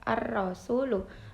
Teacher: dengan cara mengucapkan huruf di bibir dengan menjorokkan ke depan atau mecuco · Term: tafkhim